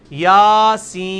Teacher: سین کو آپ 5 سے 6 الف لے کے جائیں گے, اس کو 1 الف ہی کھینچیں گے.